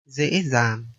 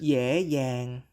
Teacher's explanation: the letter D and the digraph GI are pronounced Z in the north, but Y in the south